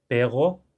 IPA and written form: peʁo (PERRO)